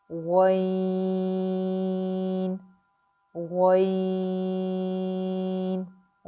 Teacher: غین جو ہے وہ موٹا حرف ہے. اس میں بھی آپ کی ناک میں آواز نہیں جانے چاہیے. اس کو بھی ہم 6 حرکات جو ہے وہ دراز کر کے یعنی کہ لمبا کر کے اس کو پڑھیں گے.